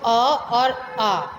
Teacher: इनका उच्चारण कहाँ से हो रहा है? हमारे गले से हो रहा है, तो ये कंठ्य स्वर हैं।